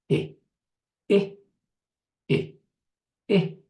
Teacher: notice that the eh is kind of like towards the front of your mouth, but this is right on you open your mouth a little bit, and there's your tongue.